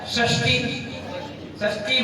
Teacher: अपने आप जीभ आपकी क्या होगी, मुड़ गई पर टकरा गई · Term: तालु सा